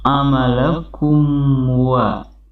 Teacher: Ini merupakan hukum bacaan izhar syafawi, yakni hukum mim mati, di mana ketika mim mati ketemu huruf waw maka merupakan izhar syafawi, pembacaan mimnya pun jelas